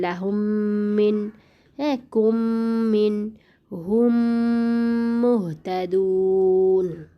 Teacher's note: মিম সাকিনের বামে মিম থাকলে বামের মিমে মানে পরের মিমে, বামের মিমে তাসদিদ দিয়ে ইদগম করে গুণনার সাথে পড়তে হয়। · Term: ইদগমে শাফই